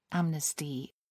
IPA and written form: ˈæmnɪstɪ (amnesty)